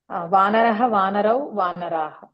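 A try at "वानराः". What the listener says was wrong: వానరా అని అయిపోతారే, వానరాహ అని ఉంటుంది కదా. మొత్తం క్లారిటీగా చెప్పండి.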